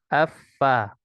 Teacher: Huruf fa dari kedua bibir, ya. Afa.